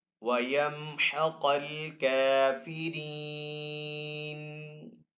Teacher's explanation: یہ قاف حروف مستعلیہ میں سے، تو اس قاف کو یہاں پہ پر پڑھیں گے، اس کاف کو یہاں پہ باریک پڑھیں گے کیونکہ یہ حروف مستعلیہ میں سے نہیں ہے۔